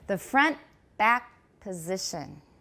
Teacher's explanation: do you also notice that long pause after the K before the P? PTK 后面停顿的时间很长，同时 back 有重音，只有一个音节。It's going to be really, really a long pause.